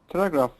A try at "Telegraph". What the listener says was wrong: Telegraph. Good.